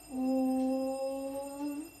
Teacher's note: इसे बोलने में हमें ह्रस्व से तिगुना समय लगता है। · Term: प्लुत स्वर